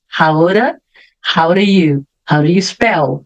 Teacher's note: aqui vamos fazer ligação do How com o do vai ficar aura lembra que o do vira o d também · o D também vira aquele som de R, suave